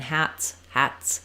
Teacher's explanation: the tongue's a little lower and the sound continues that sound the tongue is up high and it releases a burst of air so we basically do the burst and then we release it right into the s